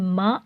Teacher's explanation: होंठों के बाहर वाले हिस्से को मिलाकर छोड़ने से मा अदा होता है